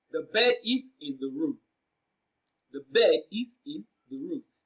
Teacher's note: The emphasized word here is in.